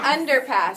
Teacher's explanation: So where does the accent go? On the first syllable.